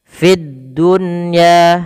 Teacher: Fid dunya ada di sini alif lam, kita namakan dengan alif lam syamsiyah, yaitu alif lam yang tertulis tapi tidak dibaca lamnya, langsung ke huruf dal dan dia ditasydidkan. Fid dunya, ini ada nun sukun bertemu ya.